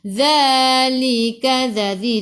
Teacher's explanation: Zalika zadhi, hujung lidah keluar pada gigi depan